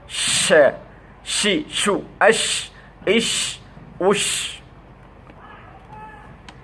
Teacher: জিহ্বার মাঝখান উপর লাগিয়ে মুখের ভিতর আওয়াজটা ছড়াই যাবে, এটার নাম তাফাসসি